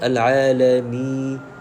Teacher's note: kita baca al-alami ni dah masuk hidung dulu dah, jadi salah. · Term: suara gunnah